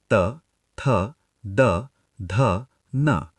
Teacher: आपकी जीभ दांतों पर लग रही है। यह दंत्य यानी डेंटल है।